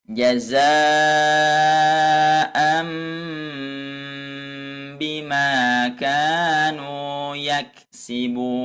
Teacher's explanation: Nah, di situ kan ada tanwin bertemu huruf ba. Nah, ini otomatis bunyinya itu dimasukkan kepada huruf mim.